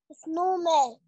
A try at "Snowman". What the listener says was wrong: لا بلاش إيه بلاش إسنو عايزها Snowman. Snowman.